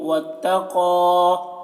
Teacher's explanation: قاف کو پر پڑھیں گے، قاف حروف مستعلیہ میں سے